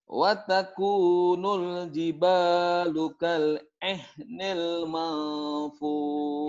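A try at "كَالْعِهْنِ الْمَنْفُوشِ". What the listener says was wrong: Sinnya mana? Ujungnya kan sini dia. Shin ya, ujungnya.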